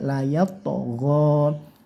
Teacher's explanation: ghin ini jangan sampai terdengar seperti huruf G, tapi dikasih GH gitu ya, ada anginnya. Layat togho, go-nya panjangan 1 alif atau 2 harokat.